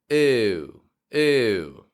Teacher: It's a close sound, as in your teeth are close together. And it's a U sound. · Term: tense close U